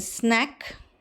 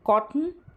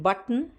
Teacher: N is partially devoiced when it is preceded by s, or t